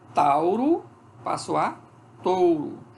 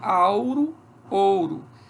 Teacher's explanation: O A antes do U, que é a marca de terceira pessoa do singular, do pretérito perfeito, faz com que a vogal temática assimile o traço de altura do U. Quando o A assimila o traço de altura do U, o A se torna O. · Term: assimilação